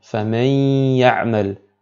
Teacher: On nasille la lettre prononcée en ne prononçant pas la lettre nun sakina ou le tanwin. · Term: la fusion avec nasillement